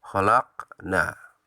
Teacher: Pada kata khalaqna dibaca memantul tipis. Ini dinamakan qalqalah sugro.